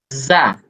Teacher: Di ujung lidah, ya, ujung lidah kita ketemu dengan gigi seri bagian bawah.